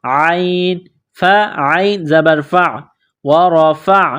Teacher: عین گلے کے درمیان سے زور لگا کر عین کو نکالیں گے